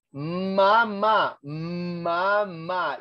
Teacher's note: la M suena, pero el aire no sale en ese momento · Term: oclusivas